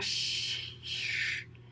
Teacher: by rounding your lips it changes the quality of the sound a lot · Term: ash